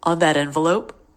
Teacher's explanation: The T connecting the 2 words is a flap T because it comes between 2 vowels.